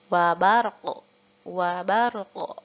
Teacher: Dan untuk huruf qalqalah qaf ketika waqaf, ketika dipantulkan masih tetap berbunyi qa.